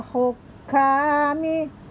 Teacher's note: ha keluar dari tenggorokan bagian tengah. Hukami, kaf 2 harokat, namun karena ada tasdid ditekan dulu.